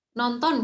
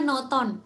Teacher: Jadi misalnya kata nonton gitu ya. Ternyata N yang kedua itu akan hilang. Jadinya noton seperti itu. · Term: penghilangan bunyi nasal N